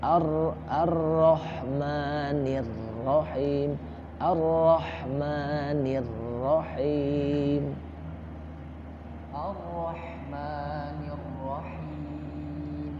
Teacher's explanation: Ro-nya takrir, ada sifat takrir, ada getaran itu.